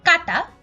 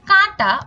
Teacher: চন্দ্রবিন্দু এর উচ্চারণ হচ্ছে আনুনাসিক আনুনাসিক উচ্চারণ না করলে অর্থের বিপর্যয় হতে পারে যেমন 20 অর্থাৎ